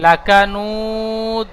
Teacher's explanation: দাওয়ালের উপরে দুপেশ এসেছে, আয়াতের শেষে থামবো, তাই দুপেশকে বাদ দিয়ে সাকিন ধরে কলকলা করে আগের অক্ষরের সাথে মিলিয়ে পড়বো